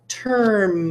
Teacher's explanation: I can't hear the vowel in term. I can't hear it. It's like the R is controlling it way too much. Term, There's no vowel sound.